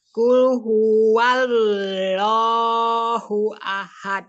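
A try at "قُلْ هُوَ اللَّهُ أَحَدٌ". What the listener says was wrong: Oh, itu fathahnya masih dibaca lo ya. Fathahnya lamnya dibaca la. Wallah.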